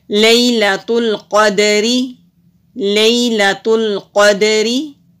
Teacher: قاف حروف مستعلیہ میں سے ہے، موٹا کریں گے، دال ساکن ہے، حروف کلکلا میں سے ہے تو کلکلا کرتے ہوئے پڑھیں گے